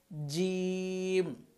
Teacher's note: জিহ্বার মধ্যখান উপরের তালুর সাথে লাগাতে হবে